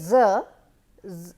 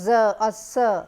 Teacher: So, if you try to say z, you will listen, you can understand or you can feel that hissing or that noisy part before the actual utterance of the sound z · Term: fricative